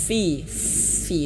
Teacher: Bibir bawah menyentuh ujung gigi dari atas. Fi dan ada angin ya, ada angin. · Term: huruf fa